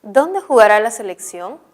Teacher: una pregunta directa se está haciendo una pregunta directamente al receptor pero la respuesta no puede ser ni sí ni no por eso el tono o la inflexión final o tonal es descendente